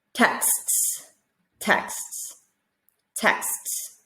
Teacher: with the x sound what we're really hearing is a k and an s